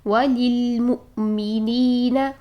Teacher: حمزہ ساکن پر آواز اور سانس دونوں بند ہو جاتی ہیں, آواز کو ہم جھٹکے کے ساتھ بند کریں گے